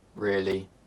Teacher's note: A flat tone can indicate boredom.